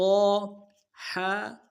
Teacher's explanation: وسط حلق، حلق کا وہ درمیان والا حصہ وہاں سے ادا ہوگا جماؤں کے ساتھ